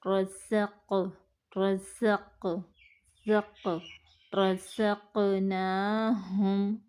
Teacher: رزق، رزق، زق، رزقناہم، را کو زبر کی وجہ سے پڑھیں گے، قاف پر قلقلہ ہوگا، نون کو ایک الف کے برابر لمبا کریں گے کھڑی زبر کی وجہ سے